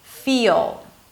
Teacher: Or a heavy L, it is not deal, but it's deal, right? I'm dropping the back of the tongue before creating the L sound. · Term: dark L